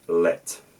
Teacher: In my accent, which is again not far off RP, what I have is what's called a complementary distribution, where one sound exists in one position and another sound exists in another position. So at the syllable onset, at the start of a syllable, I'll use a L sound, which I think is post-alveolar in my case.